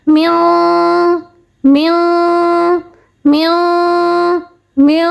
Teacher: جو ہم نے پڑھا میو 1 سیکنڈ تک، یہ جو ناک میں آواز کو چھپایا یہ کہلائے گا غنہ. ٹھیک ہے، اقفا کا غنہ ایسے ہوگا، نون کی آواز چھپے گی، ساتھ ہم غنہ کریں گے.